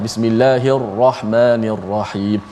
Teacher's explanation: Ra tu dibaca dengan secara suara yang tebal. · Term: tafkhim